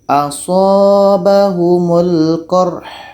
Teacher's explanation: Sedangkan ha ini mati, sifatnya adalah hamas, berangin. Jadi mesti jelas hanya.